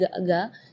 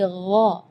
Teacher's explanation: Jadi kalau ga itu dia makhrajnya dari lidah. Ya, tapi kalau huruf ghain itu dari bagian tenggorokan ya.